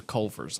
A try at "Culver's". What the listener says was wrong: Culver's. There's a V.